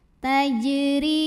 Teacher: Huruf ra dibunyikan secara tarqiq sebab barisnya di bawah, maka bacanya tipis.